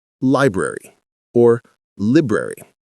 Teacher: The first syllable gets the emphasis.